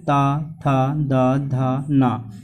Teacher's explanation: इसमें हमारी जीभ दांतों को टच करती है, ठीक है। इसमें हर एक वर्ड में हमारी जीभ दांतों को टच करती है, इसलिए इसे दंत बोलते हैं।